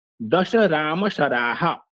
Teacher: बाद तथा राम के द पद का उच्चारण करने के पश्चात राम का उच्चारण करने के पूर्व कुछ समय रुकना पड़ता है वह यति है इस यति से अर्थ भेद भी हो जाता